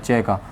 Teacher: उसी प्रकार जब हमने च का उच्चारण किया, च का, तो च का उच्चारण करते समय वायु हमारे तालु को छूकर बाहर निकलती है, या यूँ कह सकते हैं कि वायु का जो अत्यधिक घर्षण होता है वो हमारे तालु वाले स्थान पर होता है।